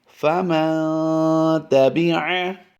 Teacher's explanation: نون ساکن کے بعد تا حروف اخفاء میں سے آیا ہے، اس لیے یہاں پر غنہ ہوگا، یعنی نون ساکن میں اخفاء ہوگا، غنہ زمانی اسے کہیں گے۔